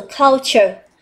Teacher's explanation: Thì đối với culture này của chúng ta thì chúng ta sẽ nhấn stress vào một nhé.